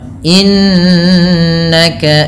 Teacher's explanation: Nun yang berharakat tasdid ini ditahan dengan bacaannya dua harakat dengan menahan bunyi nnya yang kita kenal dengan istilah yaitu gunah